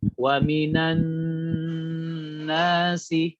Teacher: Harus benar-benar masuk ke rongga hidung ya, secara sempurna. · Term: gunnahnya akmal